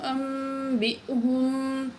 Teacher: تو یہاں دیکھیں نون ساکن کے بعد با آ گیا، تو جب نون ساکن کے بعد با آتی ہے تو نون میم میں بدل جاتی ہے، ٹھیک ہے، اور یہاں حمزہ آ رہا ہے تو حمزے میں جھٹکے سے پڑھیں گے ہم، ساکن حمزہ